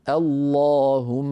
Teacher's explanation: نبدا اللهم بهمزه مفتوحه هي همزه الوصل وبعدها لام مشدده مفخمه لان اللهم تعامل معامله الله من حيث التفخيم والترقيق اذا نبدا